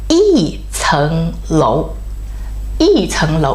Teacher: When the second is raising tone, the first tone changed to falling tone.